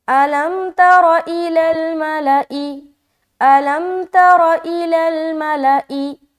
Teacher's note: صرف ایک بات کا خیال رکھیں کہ را کو موٹا رکھنا ہے، باقی سب کو جلدی پڑھنا ہے، کہیں بھی نہیں کھینچنا۔